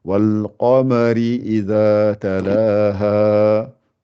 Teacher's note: le qa, j'ai souligné puisqu'elle est gonflée par rapport au reste.